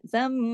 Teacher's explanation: رجزم غنہ ہوگا، میم مشدد ہے، بڑا غنہ ہوگا